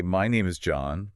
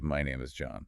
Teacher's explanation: Question inflection or uptalk at the end of a statement. It makes a statement sound like a question seeking validation.